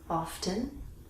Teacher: in American English we can say often with the T